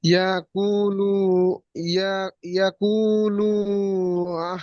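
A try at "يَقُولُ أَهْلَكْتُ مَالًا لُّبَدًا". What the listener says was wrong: লু টান বেশি হয়ে যাচ্ছে ভাই, এটা বেশি টান হবে না। ইয়াকুলু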